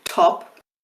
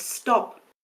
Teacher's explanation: Because in English, after an S, a T becomes unaspirated. But if I were to say stop and actually aspirate it, you might hear it sounds a bit strange.